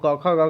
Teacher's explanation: कंठ से होगी। आप करके देखिए, क कंठ से निकल रहा है, ख कंठ से निकल रहा है, ग कंठ से निकल रहा है।